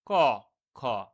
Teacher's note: কোনো ধরনের ঘর্ষণ হচ্ছে না সেইভাবে, বা সেইভাবে গাম্ভীর্যপূর্ণ আওয়াজ হচ্ছে না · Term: অঘোষ ব্যঞ্জন ধ্বনি